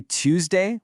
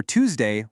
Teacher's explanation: Whether you say Tuesday with that little yes sound or Tuesday without it, you're actually correct either way.